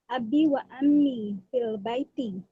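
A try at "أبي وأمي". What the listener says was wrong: And my mother, huh? It's not ammi with a ayn. It's ummi. So Abi wa ummi. And my mother.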